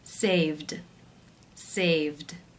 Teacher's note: The final sound is the v voiced consonant sound, so the ed will take the d voiced d sound ending.